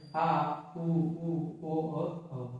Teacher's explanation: पश्च स्वर वो जो जीभ के पिछले वाले भाग से बोले जाएं